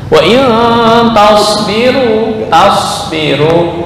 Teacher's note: Taus sama dengan sin, ya, sama dengan sin, hanya sifatnya isti'ala, naik ke atas.